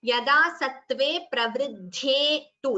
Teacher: dha is mahaprana, tu is a hasva, don't prolong it.